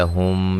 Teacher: میم ساکن کا یہاں جو ہے وہ اخفا ہے، غنہ کریں گے. اخفاء شفوی اس کو کہا جاتا ہے.